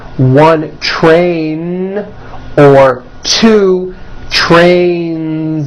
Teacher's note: Next word, train, ends with a voiced N.